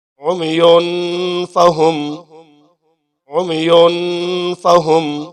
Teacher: تنوین ہے، آگے فا ہے، حروف اخفا میں سے یہاں پر دیر لگائیں گے